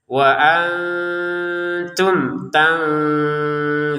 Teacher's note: nun sukun ketemu ta ini kita baca dengan samar, wa antum, jangan dibaca wa antum.